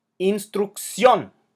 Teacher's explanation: instruction has an emphasis on the last syllable · Instrucción has an emphasis on the last syllable, even though it ends in an N. Therefore, it's breaking the rules, so we need to write the accent mark.